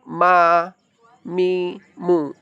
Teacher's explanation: Ma huruf ma mim itu makrijul hurufnya berada di dua bibir bertemu.